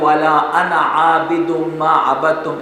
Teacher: اہل عرب جب بھی انا ادا کرتے ہیں تو وہ اس الف کو حذف کرتے ہیں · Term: الف حذف